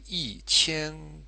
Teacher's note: the tone for e e which is normally first tone actually becomes fourth tone because the following character the following syllable is the first type